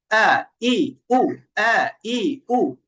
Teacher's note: হামজার দুইটা গুণ হলো বাতাস বন্ধ থাকবে আর কি হবে শক্ত হবে